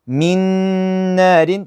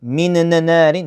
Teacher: I basically merge the noon into the other one and I pronounce the second letter which is the noon here